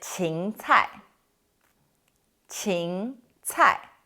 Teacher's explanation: it's a second tone and a fourth tone